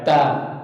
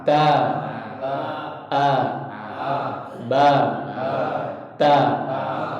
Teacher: Asalnya dari ujung lidah bertemu dengan pangkal gigi seri kita yang atas. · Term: huruf ta